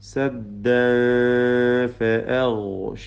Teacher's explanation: സദ്ദൻ ഈ തൻവീൻ ഫഇന് മുമ്പിലാണ് ഇഖ്ഫാ ചെയ്ത്, തർക്കീക്കോട് കൂടിയുള്ള മണിക്കലാണ് ഇഖ്ഫാ. ഹഖീഖി പൂർണ്ണമായ അവ്യക്തമായ രീതിയിൽ മണിച്ചുകൊണ്ട് സദ്ദ ഫഅഗ്ഷൈനാഹും.